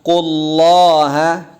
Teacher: Nah, ada namroh di qa-nya, penekanan. Qullaha tebal Allahnya. Naikin lidah bagian belakangnya.